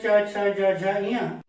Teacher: च वर्ग के जितने भी व्यंजन हैं सब आपके तालु को स्पर्श कर रहे हैं